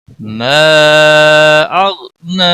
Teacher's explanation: हुरूफ मद के बाद हमजा बशक्ल अलिफ आया हुआ है, गोया 3 सेकंड लंबा करके पढ़ेंगे, 3 अलिफ के बराबर खींच कर पढ़ेंगे।